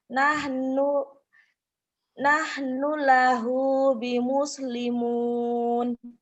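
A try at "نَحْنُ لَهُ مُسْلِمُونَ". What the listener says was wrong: nahnu lahu muslimun. Nggak bi muslimun ya, nggak ada binya.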